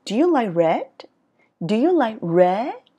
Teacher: đối với những cái yes no question thì thường ngữ điệu ở cuối câu nó đi lên